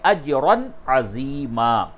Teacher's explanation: تنوین کے بعد عین ہے تو اظہار ہوگا